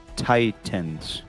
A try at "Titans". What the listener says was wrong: Pronounce the T. Titans.